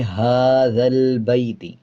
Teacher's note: ہا کے اوپر کھڑا زبر ہے، 1 سیکنڈ لمبا کریں گے